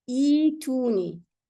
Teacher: You drop the hamza, the second hamza, and you keep the ya. So it becomes ituni.